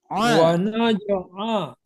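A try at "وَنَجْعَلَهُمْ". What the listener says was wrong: Ya, sedikit lagi. Rokoahnya kurang sedikit lagi. Wa naj'a. Ya, itu wa naj'alahum.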